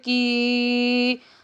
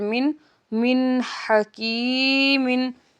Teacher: یہاں پہ یا ساکنہ سے پہلے زیر ہے، یا مد ہے، ہم اس کو ایک الف کی مقدار کھینچ کر پڑھیں گے